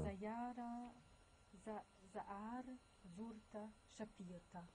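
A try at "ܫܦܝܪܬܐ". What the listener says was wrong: Ouais. Shapirta. Très bien.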